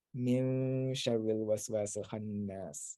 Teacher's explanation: you can like nasalize that noon